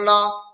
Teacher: طیرن ابابی، لام زبر لا، لام کے اوپر زبر کی حرکت ہے، زبر کو جلدی پڑھیں، تھوڑا بھی نہ کھینچیں